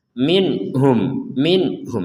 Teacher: di sini ada nun sukun bertemu ha maka kita membacanya dengan jelas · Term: dibaca dengan jelas